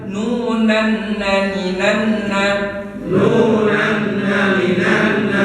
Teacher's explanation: huruf nun yang bertasydid harus ditahan